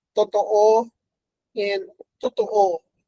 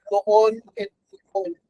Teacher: in Tagalog, the U and the O are not so distinguishable